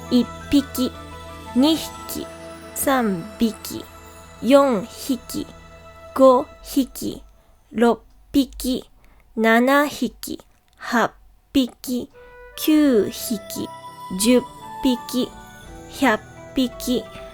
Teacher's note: So, hiki becomes biki and hai becomes bai for three and 1,000.